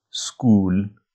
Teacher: It's not O and U together. It's a third sound. It's not a diphthong. It's one new single vowel. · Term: oo sound